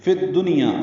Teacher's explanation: فا کو دال سے ملا دیں گے، الف لام نہیں پڑھا جائے گا، یہ ادغام شمسی ہے